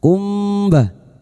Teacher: Kali ini bertemu ba. Mim sukun dibaca samar dan mendengung selama tiga harakat. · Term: Ikfa syafawi